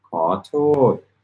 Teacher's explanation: 2 syllables. First is rising, second is falling.